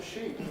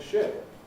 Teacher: in sheep, ship, because of Pre-Fortis clipping, you must concentrate on the quality rather than on the duration.